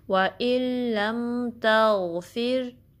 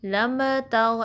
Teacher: मीम पे कलकला नहीं करना, मीम को स्टेबल रखना है।